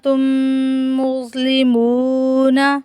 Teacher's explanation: मीम साकिन के बाद अगर दूसरी मीम आ जाए तो मीम साकिन में गुन्ना होगा, यानी आवाज़ नाक में लेकर जाएंगे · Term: इदगाम शफ़वी